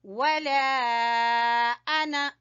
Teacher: انا جو ہے جہاں بھی قرآن مجید میں آتا ہے اس کا الف نہیں پڑھا جاتا، صرف نون پڑھا جاتا ہے ، یہ لکھنے میں الف آتا ہے، پڑھنے میں نہیں آتا۔ · لام کے اوپر آپ دیکھ رہے ہیں مد ہے اور آگے حمزہ ہے، تو مد جائز ہے 3 سے 4 الف کے برابر ، اس کو کھینچیں گے، ولا انا، انا جو ہے جہاں